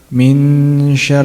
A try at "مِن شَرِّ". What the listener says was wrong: Not min. إخفاء means to conceal or to hide. That means we're hiding the pronunciation of Noon.